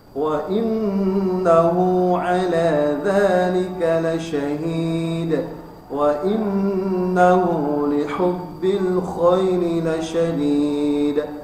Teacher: Ya, itu ada seperti biasa baca 2 rakaat di ayun, kemudian ujungnya qalqalah kubra, ya, huruf dal yang di ujung